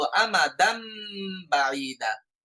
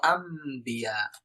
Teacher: আমাদান N sound বা নুন sound উচ্চারণ না করে আমরা মিম সাউন্ডে বলবো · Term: ইকলাব